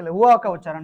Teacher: व का उच्चारण दांत और ओष्ठ दोनों से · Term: दंत ओष्ठ